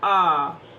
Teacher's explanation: तीसरा प्रकार, मुख खुलने के आधार पर विवृत स्वर। इसमें मुख यानी कि मुंह पूरा खुला रहता है।